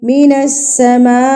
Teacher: یہ مد متصل، یعنی کہ بڑی مد ہے، 4 حرکات کے برابر آپ اس کو کھینچ کے پڑھیں گے